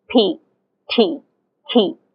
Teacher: in English speaking people say p t ke there's an aspiration